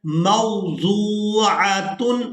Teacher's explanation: واو ساکن ہے اور اس سے پہلے والے حرف کے اوپر پیش ہے تو یہ واو مدہ ہے. اب ہم نے ضاد کو واو مدہ کے ساتھ ملاتے ہوئے کھینچ کر ادا کرنا ہے